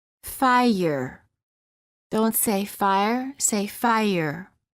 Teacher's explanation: quality of the vowel often changes when the r follows it there is a slight u sound that is added after certain vowels making it sound almost as if the word contains an extra syllable